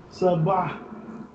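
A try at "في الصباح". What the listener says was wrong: Fis Sabahi. We have Shadda and Swad, we have to join it with previous vowel of Fa. Fis okay. Sabahi.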